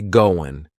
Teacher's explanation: that final g in the word going is going to be cut off